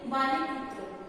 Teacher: दो शब्दों को एक ही प्रवाह में बोला जाता है, लेकिन उनको बोलने के लिए उनमें थोड़ा सा हल्का सा विराम आता है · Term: संगम